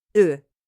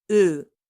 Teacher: The first one is a short sound, ö, and the second one is a long one, ö.